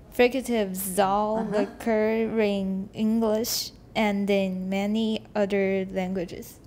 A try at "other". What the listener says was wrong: Okay, first of all, not udder. Udder is 牛乳, 就是那个乳牛的那个乳房, 那个叫 udder. U-D-D-E-R, 就是乳牛的那个乳房, 叫 udder. So that's why it will become distracting.